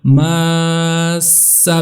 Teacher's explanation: پھر میم کے بعد جو الف مدہ ہے اس کو کھینچنا ہے، لمبا کرنا ہے 4 الف کے برابر